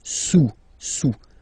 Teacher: Don't pronounce the final S, and then this OU combination of vowels is pronounced OU, okay? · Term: final S not pronounced